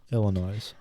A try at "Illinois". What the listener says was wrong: You say Illinois? That's incorrect. Illinois.